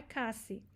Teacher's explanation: O S, não existe o som do Z no espanhol, não existe esse som.